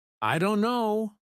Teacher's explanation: Instead of pronouncing every letter, many native speakers say, "I don't know." The T sound is dropped completely. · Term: dropped sounds